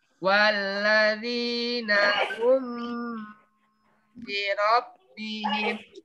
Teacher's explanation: apabila mim sukun bertemu dengan huruf ba, maka cara membacanya harus dibunyikan sama-sama di bibir dan didengungkan. Istilahnya juga ketika mim sukun bertemu ba masih dengung. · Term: ikhfa syafawi